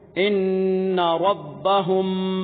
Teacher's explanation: میم ساکن کے بعد با گئی ہے اس کی آواز کو پشیدہ کرنا ہے